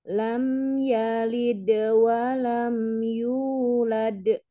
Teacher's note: yalid Wam yulad H langsung nah ini tidak ada tasdid ya tidak ada tasdid di Dal di huruf yang berqalqalah Maka jangan ditahan ya langsung